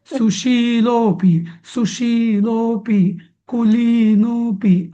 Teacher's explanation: सुशील मधला शी आणि कुलीन मधला ली हे दीर्घ म्हणायचे